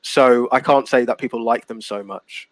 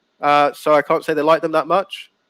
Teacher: my voice goes a bit lower at the end and it just indicates that i finished speaking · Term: lower your intonation